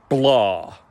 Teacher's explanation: So we have blah, but we have the adjective in Gaelic, blah. And the thing that I notice most is that there's a more energized plosive B at the beginning